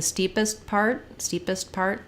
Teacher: it'll be an unreleased T